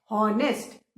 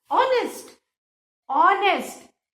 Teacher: ऑनेस्ट vowel का sound आ रहा है, कहीं भी कॉन्सोनेंट का साउंड नहीं आ रहा है